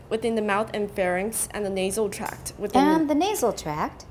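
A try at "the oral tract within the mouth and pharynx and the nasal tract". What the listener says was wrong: We have a big break before that and, right? Oral tract, 然后后面 within, 那是跟它在一起的一个 phrase, right? So we can pause less long there.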